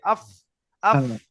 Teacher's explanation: সামনের এই উপরের দুটো যে দাঁত আছে এই দাঁতটা নিচের ঠোঁটের ভিজে অংশই লাগবে আফ আফ একটা হাওয়া বেরিয়ে আসবে আফ আফ আফ আফ আফ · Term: ফা উচ্চারণ